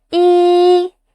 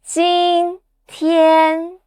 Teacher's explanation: The first tone is high and flat. Your voice stays up there, like you are singing a high note.